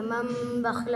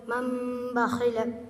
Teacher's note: تنوین نون ساکن کے بعد با تو نون کو میم سے بدل کر گنہ اور اخفا کے ساتھ پڑھیں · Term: اقلاب